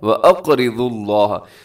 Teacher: یہاں پر دیکھیے کہ واو کے اوپر پیش ہے تو ہم یہاں پر لفظ اللہ کو موٹا پڑھیں گے